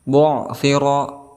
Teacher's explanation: ada ra yang diharokati dengan fathah, maka kita hukumi sebagai tafkhim, artinya tebal